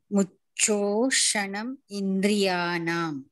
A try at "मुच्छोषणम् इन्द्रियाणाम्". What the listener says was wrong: don't split it बिगिनी it is मुच्छोषणम् इन्द्रियाणाम्